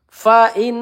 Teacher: nun bertasydid gunah musyaddadah. Kita tahan dua atau tiga harakat.